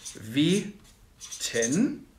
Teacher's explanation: Folgendes Beispiel hatten wir auch schon in Folge 12. Weten, das ist ein langer Vokal, ein langes E, aber einlautig. E, nicht Ei. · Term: einlautiges E